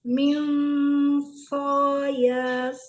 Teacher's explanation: Nun sukun ketemu shot, dengung, tebal.